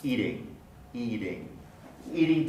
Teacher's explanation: here's some more examples this time we're looking at flapping where t is pronounced as a flap before an unstressed vowel · Eating, E is stressed, the ing is unstressed, so that would be a place where we pronounce the flap.